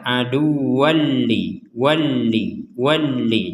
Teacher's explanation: Maka kita memasukkan tanwin ini kepada lam ya jika kita menggabungkannya, sehingga kita akan membacanya aduwalli walli.